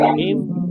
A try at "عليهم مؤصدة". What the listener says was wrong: गुन्ना करो भाई, मीम साकिर के बाद मीम आ रहा है, गुन्ना नहीं होगा। मैं गुन्ना कर रहा हूँ, आप गुन्ना नहीं कर रहे। إنها عليهم مؤصدة.